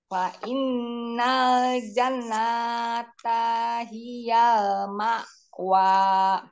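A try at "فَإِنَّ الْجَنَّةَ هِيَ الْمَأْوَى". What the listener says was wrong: Ini nun tasdidnya digunakan. Fa innal jannata hiyal maqwa.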